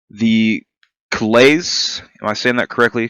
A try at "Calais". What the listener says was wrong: Calais. Yeah, you just don't have to say the S.